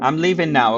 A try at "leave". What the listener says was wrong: Why do you say live? leave. You need to say leave, not live. Not leave. Not leave. Leave.